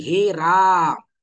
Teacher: येईल जसं एखाद्या व्यक्तीला आपण हाक मारतो जसं की हे राम इथे राम असा जो आ झालेला आहे हा काय आहे प्लुत स्वर आहे